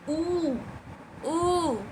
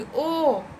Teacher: वैसे स्वर जिनका उच्चारण करते समय आपके ओष्ठ की आकृति गोल हो जाए वो वृत्तमुखी